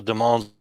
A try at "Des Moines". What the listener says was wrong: Des Moines? No, no. There's no S in Des Moines, even though there is an S. Don't say it.